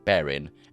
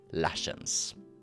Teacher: The final feature I found to be very distinct is the dropping of G from words such as bearing, becoming bearin, and lashings becoming lashins